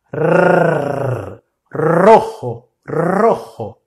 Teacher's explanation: quando o R começa uma palavra, a pronúncia é sempre vibrante, com R vibrante. Então você vai sempre falar assim: R, com a língua tocando os dentes superiores muito rapidamente.